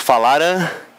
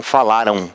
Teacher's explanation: Então esse M vai soar com um som de U. Vai ter aí a sonorização de um U, então semivogal. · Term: ditongos decrescentes nasais